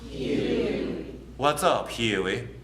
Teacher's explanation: The oo sound it's not just oo, it's ew. There's an E before it, and again, we're adding a diphthong to normally a simple vowel sound.